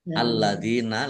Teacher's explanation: lamnya dibaca dobel ada l ada tasdidnya Dal kasrah Ya Sukun Mad thii panjang dua harakat alladzina